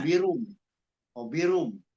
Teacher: bacanya N-nya diganti sama M. Harusnya kan hobirun. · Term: iklab